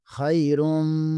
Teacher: میم مشدد ہے، یہاں پر غنہ لازمی ہوگا